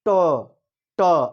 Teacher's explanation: आप देखेंगे जिह्वा का अगला हिस्सा ऊपर तालु में टच हो रहा है, ट, ट, तो ये मूर्धा बनता है। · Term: मूर्धन्य